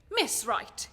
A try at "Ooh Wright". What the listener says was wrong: Ooh, right, actually. Ooh, right. The ooh isn't silent.